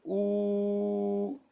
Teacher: if we say ooo then the lips are rounded and when the sound comes it comes in the form of whoo